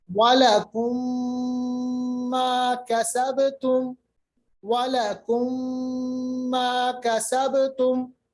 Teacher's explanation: دونوں ہونٹوں کو ملائیے اور آواز کو آپ ناک کے بانسے میں لے جائیے کچھ دیر کے لیے، ایک الف کے برابر، یعنی 2 حرکات یا ایک الف کے برابر ناک کے بانسے میں میم کی آواز کو لے جائیے ہونٹوں کو بند کرتے وقت، ٹھیک ہے؟ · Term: ادغام